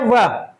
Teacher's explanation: वह का उच्चारण स्थान होगा दंतोष्ठ, यानी ये दांत से और ओष्ठ से दोनों से उच्चारित किए जाते हैं